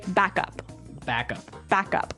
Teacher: so both words are stressed at about the same level